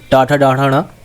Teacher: ट वर्ग जो है वो हमारे मूर्धा को स्पर्श करती है, टाठा डाढ़ा ण, है ना।